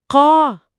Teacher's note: अब काफ तो एक कुदरती हैवी वेट हर्फ है। वो हमेशा मोटा होता है। तो जब उसके बाद अलिफ आया तो वो भी मोटा हो गया।